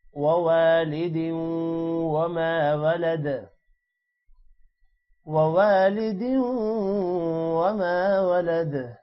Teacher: الف آ رہا ہے واو کے بعد، اسی لیے تھوڑا لمبا کریں گے۔ ووالد دال واو 2 زیر دیوں غنہ ہوگا یہاں پر۔